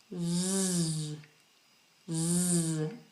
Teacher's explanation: roof of the mouth and allowing air to pass through Z so the tongue has to be touching the roof of the mouth don't allow the tongue to touch the back of the teeth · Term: z sound